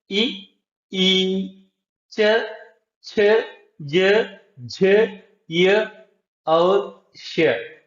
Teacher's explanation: तालु और जीभ के स्पर्श से बोले जाने वाले वर्ण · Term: तालव्य